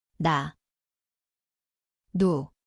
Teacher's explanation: 가, 고, Ini adalah huruf. 니은, Ia berbunyi seperti N. Tempatnya adalah hujung lidah, gusi atas.